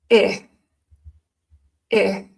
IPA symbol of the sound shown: ɪ